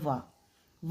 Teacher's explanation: वो है वाह के लिए क्या ज़रूरत है, दांत और ओठ दोनों की